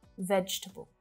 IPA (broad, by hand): ˈvɛdʒ tə bəl